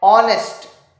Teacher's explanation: the h is silent and the starting sound is a vowel sound